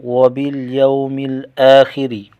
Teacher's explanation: واو ساکن کا واو لین ہے، خا کو موٹا کریں گے، حمزہ کو ایک الف کھینچ کر پڑھیں گے۔